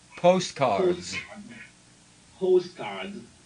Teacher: Postcards is one of those compound words where the first syllable has a stress.